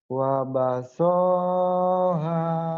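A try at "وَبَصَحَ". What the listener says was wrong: kenapa panjang? Karena kamu berpikir ini alif. Kini kan ada barisnya, Mas.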